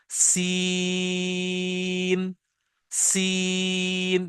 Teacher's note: light whistle, जैसे सीटी होती है